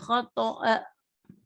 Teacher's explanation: تو ہم نے یہاں پہ حمزہ کے اوپر جھٹکا دیا